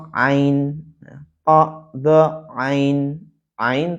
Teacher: Ain tempatnya tenggorokan bagian tengah